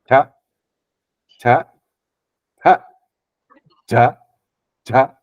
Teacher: back of tongue is going to touch our palate